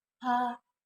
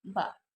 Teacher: For example, sound pa and ba. These sounds are both identified as bilabial and stop sounds, but pa is voiceless and ba is voiced.